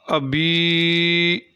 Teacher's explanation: ابی کو لمبا کریں گے، 1 الف کے برابر لمبا کیا جاتا ہے